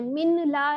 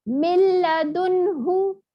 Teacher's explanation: नून की आवाज देखिए गायब हो गया. मिन ला नहीं पढ़े, मिल्लदुन्हु.